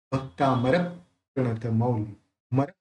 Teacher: जो प है उसको र के साथ जोड़ के बोलना है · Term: संयुक्त अक्षर